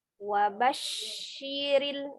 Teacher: Kita lihat shin sukun memiliki sifat tafasyi ya. Ada tafasyi wabasyiril ya, tapi dengan tidak memonyongkan kedua bibirnya.